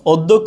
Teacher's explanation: যখন হবে তখন আমরা দুইটা মহাপ্রাণ একসাথে ব্যবহার করতে পারবো না দুইটা মহাপ্রাণ একসাথে ব্যবহার করতে পারবো না যার কারণ হচ্ছে যে প্রথমটা অল্পপ্রাণ দ্বিতীয়টা মহাপ্রাণ